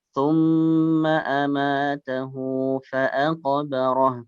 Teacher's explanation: hu-nya panjang, 2 harokat. Di situ kan ada waw kecil ya.